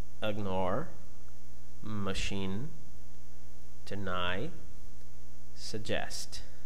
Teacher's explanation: The group B, in comparison with the group A, has vowels in unstressed syllable, and these vowels are much shorter and quieter. Usually they are classified as reduced sounds.